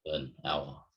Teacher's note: And the next part, student pointed out, the student pointed out that why is it an hour when there's an H, but because the H is silent, right? We would say an hour.